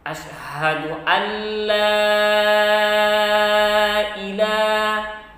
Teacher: la-nya dibaca lebih panjang karena la-nya setelahnya bertemu dengan hamzah